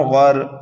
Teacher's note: والنازعات غرقا، غین را زبر غر، غین حروف مستعلیہ میں سے ہے، پر پڑھیں گے، اور را کو اس لیے پر پڑھیں گے کہ را ساکن سے پہلے اگر زبر یا پیش ہو تو را کو پر پڑھا جاتا ہے